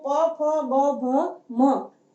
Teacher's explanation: इसको बोलते समय हमारे दोनों होठ जो है वो आपस में स्पर्श करते हैं, इसलिए इसको ओष्ठ्य कहा जाता है।